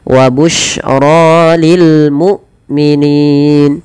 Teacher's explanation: Hamzah tidak boleh diseret, dan dia harus dijelaskan suara bunyinya, penahanan daripada suaranya dan penahanan dari nafasnya.